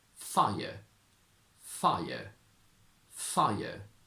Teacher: Again, you can find more details about intrusives in my video that I linked here earlier, but as a quick rule, when we connect the sound I to another vowel, we need to add a little y sound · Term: intrusive sound